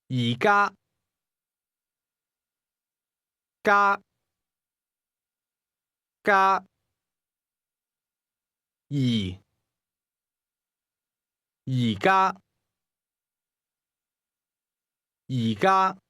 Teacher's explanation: That's a midfalling highlevel combination.